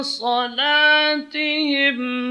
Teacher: La di sini shadnya tebal, lamnya tipis.